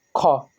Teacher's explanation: इसमें जो है श्वास वायु अधिक मात्रा में निकलती है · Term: महाप्राण